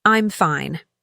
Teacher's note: Example, consider the phrase, "I'm fine." said with a falling intonation and calm tone.